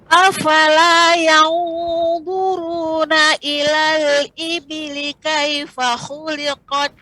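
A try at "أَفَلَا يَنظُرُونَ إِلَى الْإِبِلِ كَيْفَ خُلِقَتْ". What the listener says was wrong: Tadi pengucapan ikhfa-nya terlalu cepat ya Ibu, terlalu agak sedikit. Ya, ditambah lagi tidak terburu-buru. Afala yanzuruna ilal ibili kaifa khuliqat.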